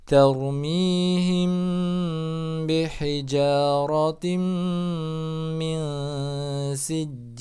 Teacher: nun sukun bertemu dengan sin itu adalah ikhfa jadi harus tahan. Jadi bacanya tarmihim bihijaratim min sijil.